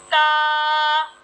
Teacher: ता जो अदा होता है जबान की नोक और ऊपर के दांतों की जड़ से ता अदा होता है